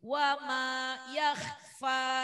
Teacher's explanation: Fa-nya jangan satu ketukan. Karena mau tabi'i yakhfa 2 ketukan. Seperti mad asli.